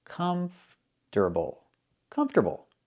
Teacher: We do not put the stress on the second syllable. It's on the first syllable.